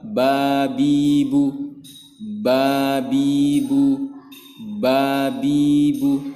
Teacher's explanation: makhroj huruf ba yaitu adalah bibir atas dan bibir bawah dirapatkan bersama-sama yaitu kedua bibir dirapatkan